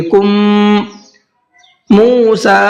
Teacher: موسیٰ میم کے اوپر تشدید ہے، تو جب ہم کاف کے ساتھ میں اس میم کو ملائیں گے تو غنہ بھی کریں گے، کم موسیٰ، اور میم کو کھینچ کر کے بھی پڑھیں گے۔